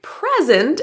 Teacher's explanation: So, in a word like present, as in a gift, has the first syllable stressed. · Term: word stress